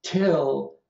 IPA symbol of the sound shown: tʰ